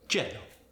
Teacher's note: The Y sound gets changed to the J sound. For instance, yellow becomes jello.